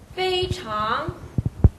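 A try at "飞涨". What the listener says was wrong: 입을 왜 닫죠? 끝나고 나서 장 하고 입을 닫았어요. 닫지 마십시오. 발음이 끝날 때까지는 앙 발음해서 닫으면 안 됩니다.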